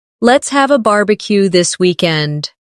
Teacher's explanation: Stress, barbecue, and weekend. So it sounds lively and friendly.